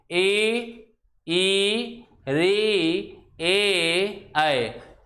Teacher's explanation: पूरी की पूरी जीभ तालु को बहुत अच्छी तरह से स्पर्श कर रही है। जीभ का जो आगे का हिस्सा है वो उस भाग को उच्चारण करने के लिए क्या बना हुआ है, एक्टिव बना हुआ है। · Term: अग्रस्वर